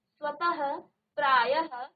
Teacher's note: तो विसर्ग का उच्चारण आधा ह की तरह किया जाता है।